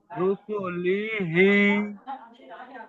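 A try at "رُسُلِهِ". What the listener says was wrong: মাশাআল্লাহ রুসুলিহি, খুব সুন্দর হয়েছে।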